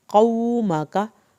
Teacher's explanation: लेकिन मीम की ज़बर को लंबा नहीं करना।